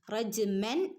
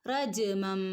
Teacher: നൂനിന്റെ ശബ്ദം അല്ലാതെ മീമിന്റെ ശബ്ദമാണ് വരേണ്ടത് ഇവിടെ ഇഖലാബ് എന്നാണ് ഈ നിയമത്തിന് പറയാ നമ്മൾ പഠിച്ചതാണ്ല്ലേ ഇലാബിന്റെ മീം പ്രത്യേകം